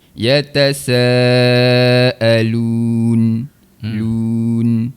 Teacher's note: Huruf nun. Huruf nun di bahagian hujung lidah, angkat sentuh pada langit.